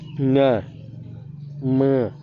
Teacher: अनुनासिक जो होता है नाक और मुंह दोनों से बोला जाता है